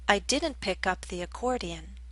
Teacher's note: I stressed the particle up